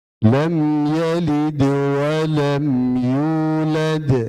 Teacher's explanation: mim mati bertemu ya, mim mati bertemu ya, tidak bertemu mim, tidak bertemu ba, pasti jelas